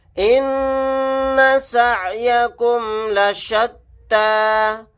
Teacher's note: نون کے اوپر تشدید ہے، یہاں پر ہم غنہ کر کے پڑھیں گے، یہاں پر یا نہیں پڑھا جائے گا۔